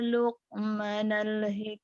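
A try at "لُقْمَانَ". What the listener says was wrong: panjang. Ma-nya panjang. Di ko tuh kadang-kadang panjang pendeknya aja nih.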